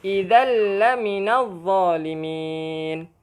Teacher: Tanwin, bila mana tanwin bertemu dengan lam. Jadi dia cara bacaannya adalah memasukkan terus tanpa dengung. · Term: idgham bila gunnah